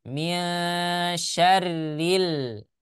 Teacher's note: ketika ro berharokat kasroh, maka dibaca tebal atau tipis? Dibaca tipis ya